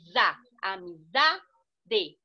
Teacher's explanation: Zá, amizade, penúltima sílaba tônica. Não tem acento, mas ela pronuncia mais forte.